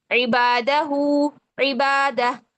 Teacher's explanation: ہم نے با کو لمبا کیا ہے الف مدہ بنا کر، کیونکہ یہاں پر خالی الف سے پہلے زبر ہے تو اس کو دو حرکات ہم نے لمبا کیا، ٹھیک ہے۔